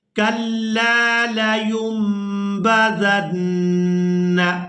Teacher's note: تو یہاں پر بھی ہم نون کو میم کے ساتھ بدل کر ادا کریں گے